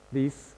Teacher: Even though we say this is a Z sound, these, do you see our English speaker makes it an S?